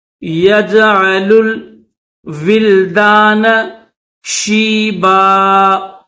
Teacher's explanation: یومن یج علل، دو لام ہے، ایک یہ لام جس کے اوپر پیش ہے اس کو دوسرے لام کے ساتھ ملائیں گے